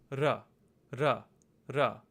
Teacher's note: try to take your tongue and just have a quick flap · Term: rolled R sound